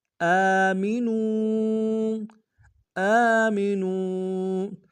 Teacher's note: حمزہ کے اوپر کھڑا زبر ہے، 1 الف دال میں کھینچیں گے